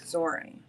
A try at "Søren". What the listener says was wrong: You pronounce the R too much. Søren. Søren. Søren. Danish, we take all the letters, just push them together.